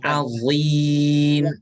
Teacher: huruf dha ditebalkan ya. Dha. Jadi jangan sama seperti zal.